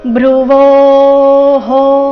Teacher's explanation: ವೋ ನಂತರ ಇರೋ ವಿಸರ್ಗದ ಉಚ್ಚಾರಣೆ ಇಲ್ಲಿ ಹೋ ಎಂದು ಬರಬೇಕು